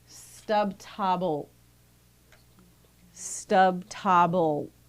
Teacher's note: So instead of dragging that L sound on, it's going to be abrupt. So a glottalized L is equivalent to having a glottal stop right after that